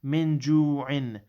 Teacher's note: This ikhfa rule, with the min, you'll conceal it, so it'll be a light noon. Min ju'in. Okay, so you won't emphasize the noon too much.